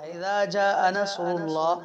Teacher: اللہ کے لام سے پہلے را ہے، تو یہ اللہ کا لام بھی پر ہو رہا ہے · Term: لام مفخمہ